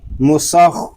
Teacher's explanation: میم پیش مو، سین خا زبر سخ، مسخ. خا یہ حروف مستعلیہ میں سے بھی ہے اور یہ حلق کے اوپر والے حصے سے ادا ہوگا